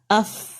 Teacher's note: آپ کے اوپر کے 2 دانتوں کا سرا نیچے کے ہونٹ کے اندرونی حصے سے لگا ہے